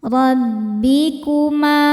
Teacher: Ra dibaca secara tafkhim karena berharakat fathah. Cara bacanya ditebalkan.